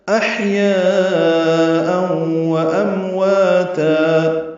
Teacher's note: احیاء و امواتا، احیا حمزہ اقصی حلق سے بالجہر ادا ہوگا اور ہا ساکن ہے، اس پہ ہم سے یہ باریک پڑا جائے گا. یا الف مدہ ہے اور اس کے بعد حمزہ آنے کی وجہ سے مد متصل ہے. اوں میں ادغام ناقص مع الغنہ، و امواتا ام میم ساکن پہ اظہار، وا الف مدہ اور تا وقفاً مد عوض 2 حرکات لمبا کریں گے.